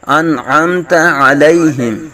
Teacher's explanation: عین آ رہا ہے تو یہاں اظہار کریں گے انعمت آگے میم ساکن کے اندر بھی میم ساکن کا اظہار شفوی کا قاعدہ لگ رہا ہے